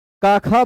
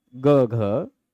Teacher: क ख बोलेंगे तो वो नहीं होगा, क ख ग घ, आप आंख बंद करके भी वो फील कर सकते हैं, क ख ग घ। तो क ख में जो वो गूंज नहीं होती वही अघोष है, और ग घ में जो हो रही वो घोष है